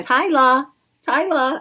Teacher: I dropped the R, so I'm trying to say Tyler. The rolling R at the Trying to end.